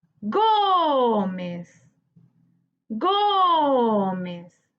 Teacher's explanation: muy bien la sílaba tónica se encuentra en la penúltima sílaba